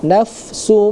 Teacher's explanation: Nah, di depannya juga ada lagi itu ee tanwin bertemu dengan huruf mim nafsumma ya idgham bighunah. Jadi harus didengungkan dan harus kita tahan terlebih dahulu